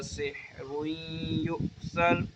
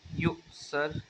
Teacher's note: یہاں پہ جھٹکا دے کے پڑھیں گے، حمزہ ساکن آ گیا